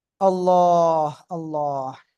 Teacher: এই যে আল্লাহ আল্লাহ, হুম, দেখেন এই যে আল্লাহ শব্দের লাম এর ডাইনে জের চিকুন করে পড়বেন